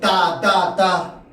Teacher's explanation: 혀끝이 윗잇몸에 붙었다 떨어지죠